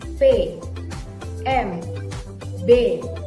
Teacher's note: when we produce these Sounds We only use both of our lips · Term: bilabial